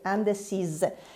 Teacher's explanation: Elle est indécise avec E à la fin et on prononce S comme Z